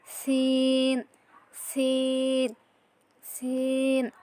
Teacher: সিন সিনটাও same ঝায়ের মতো হবে, জিহ্বার আগার সামনের নিচের 2 দাঁতের মাঝামাঝি অংশ লাগিয়ে